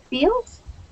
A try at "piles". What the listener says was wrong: Oh, piles. Piles. Yeah, remember we got the E there. Makes it piles.